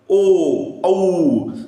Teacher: कंठ म्हणजे कंठ आणि ओठ ओठाचा काय होतोय चंबू होतोय बघा ओ औ आणि उच्चार कशातून निघतोय कंठातून निघतोय आणि अ